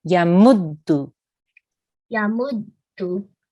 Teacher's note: you need to harden the dal sound because of the shadda